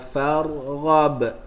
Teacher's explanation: Ra dia ada tikrar, maka bila kita nak sebut, getarkan.